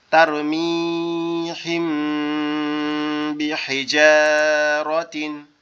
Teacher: তাহলে এই জায়গায় যদি মিমে সাকিন আছে তারপরে বা আছে, থাকার কারণে কি করতে হবে, এই মিম আর বাকে গুন্না করতে হবে। গুন্না কি, নাকের মধ্যে গুনগুন শব্দ হওয়া